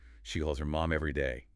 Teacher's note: Get that final Z sound in calls.